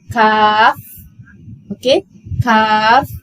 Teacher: Bila sebut huruf kaf, jangan lupa keluarkan angin.